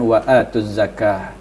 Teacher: cara bacanya lam dihilangkan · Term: alif lam asyamsiyah